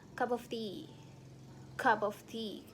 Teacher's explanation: the P sound in the cup might be pronounced as B to the uh following to the um sound in of for